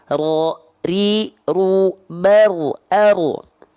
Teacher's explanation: Huruf ro itu getarannya gak boleh banyak. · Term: sifat takrir